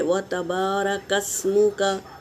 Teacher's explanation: व बिहम्दिका हा को हवा के साथ निकालेंगे। व तबारकस सीन पर सुकून है तो इसे पहले वाले हर्फ से मिला के पढ़ेंगे